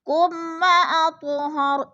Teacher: میم ساکن کے بعد واو آ گیا تو اظہار شفوی غنہ نہیں کریں گے، لفظ کو ظاہر کر کے پڑھیں گے